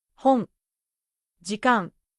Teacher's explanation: when ん comes at the end of a word, it stays completely nasal.